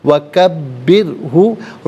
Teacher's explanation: را ساکن ما قبل با کے نیچے زیر، را ساکن کو باریک کر کے پڑھیں گے